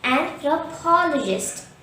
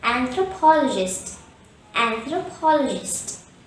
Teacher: a gist the stress is on the third syllable paul and there are two schwas in this word